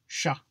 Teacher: It's pronounced like a sh, but with the tongue a little further back in the mouth.